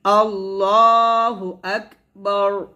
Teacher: এখানে আল্লাহ হবে লটা মোটো হবে আল্লাহু আক এখানে হামস উচ্চারণ করতে হবে আল্লাহু আকবার এভাবে আমরা